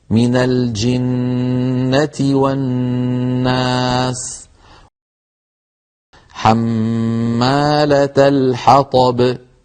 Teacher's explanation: A special attention should be given to noon mushaddada and mim mushaddada as they need more time to be pronounced. They are pronounced with most complete ghunna, which is a nasal sound.